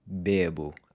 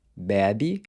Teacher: the pronunciation of the E changes from a closed E, which is like the E sound in say, to an open E, which is like the E sound in the word air